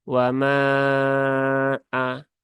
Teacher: kata atau sudah di ee dalam lafaz yang berbeda maka dia dihukumi dengan Mad Jaiz Mad Jaiz munfasil ya durasinya sama dengan mad wajib yaitu 4 atau lima harakat ya tapi kita sering menggunakan yang empat wama aah seperti itu